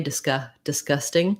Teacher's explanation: even though in disgusting we do have a g disc disgusting it really often does sound more like a k disc disgusting because we go from the s and we don't